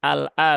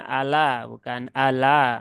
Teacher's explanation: Karena di sini ini hamzahnya harus terbaca dengan jelas ya. Eh, Lam sukun harus terpisah, hamzahnya juga harus terpisah ya. Nanti kalau dibaca begitu ya ada peluang pindah ke riwayat yang lain.